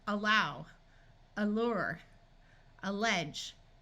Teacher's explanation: a l it often but doesn't always schah again awah is a muffled sound that usually sounds like uh especially at the beginning of a word but sometimes has a short I sound in other places in